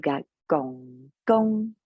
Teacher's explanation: we've got gong gong by going low to high for the maternal grandfather